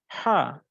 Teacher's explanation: হলকের মধ্যখান হতে উচ্চারিত হবে, একটু পাতলা আওয়াজ, পাতলা সাউন্ড বের হবে, হা। আর যখন আমরা এটা উচ্চারণ করবো, হা, হা।